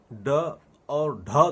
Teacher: ड और ढ ध्वनि में जीभ ऊपर से नीचे धड़ाम से गिरती है, इसलिए इसका नाम दिया गया उत्क्षिप्त ध्वनि।